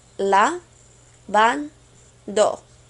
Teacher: Your stress is on van, and you want to keep it there.